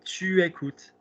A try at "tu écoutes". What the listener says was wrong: Are you pushing on the chest and you just said acute? You've just said cute. What is the last vowel?